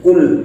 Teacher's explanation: tempat keluarnya huruf qaf ialah pada pangkal lidah, bukan pada jakun. Jadi bacanya cukup kul, bukan kul biasa.